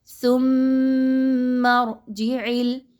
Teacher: جی ہاں، غنہ زمانی، یعنی ایسا غنہ آپ نے یہاں پہ کرنا ہے کہ میم مشدد کی آواز ناک میں کچھ دیر کے لیے ٹھہرے، کم از کم 1 سے 2 حرکات کے برابر۔